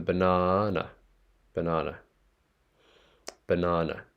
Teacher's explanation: The first NA needs to go up in intonation